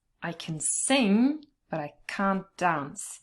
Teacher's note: So here in the positive part, you only stress the verb sing